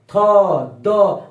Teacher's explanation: अब देखिए जीभ पीछे से दांत पर जाकर सट रही है।